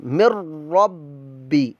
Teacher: را میں مدغم ہو جائے گا، لہذا یہاں پر نون کی وائس نہیں آئے گی، غنہ نہیں کریں گے۔ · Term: ادغام بلا غنہ